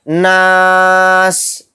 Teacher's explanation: نون الف زبر نا، سین زیر سی، ناسی، اگر یہاں پر ہم آیت کریں گے تو پھر سین کو ساکن بنا کر پڑھیں گے